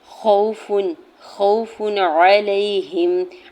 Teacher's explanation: تنوین کے بعد عین حرف حلقی میں سے ہے نا، تو یہاں پہ ہم نے تنوین کو ظاہر کر کے پڑھنا ہے ۔ خوف، خوف علیہم، عین کے اوپر سنگل زبر جلدی سے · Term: اظہار حلقی